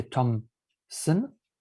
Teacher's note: if you say Thomson, the son of Tom, then it will sound like there's a P sound somewhere. So it's not a random insertion, it's an interesting mistake, and it will count as a mistake, insertion mistake, when assessing the performance of a recognition system.